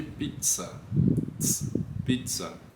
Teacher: A gente conhece também esse som, então é um familiar, porém um familiar falso. Ele não tem som de Z, ele tem um som de TS, como é no caso de pizza.